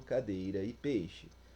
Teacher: é pronunciada e o som do encontro tem o ar passando somente pela boca